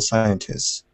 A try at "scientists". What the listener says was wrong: No, you say the S. Scientists. You say the S.